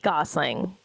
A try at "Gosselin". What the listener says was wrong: There's no G.